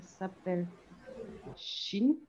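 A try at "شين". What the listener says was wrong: Shin. Allongez un peu le nom.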